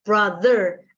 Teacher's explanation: jadi ketika dia bilang ya kan itu ini yang voice Brother ada getaran di tenggorokan signifikan sekali